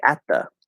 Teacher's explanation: can instead of doing a t here at and then the you can just place the t dental even though it doesn't actually exist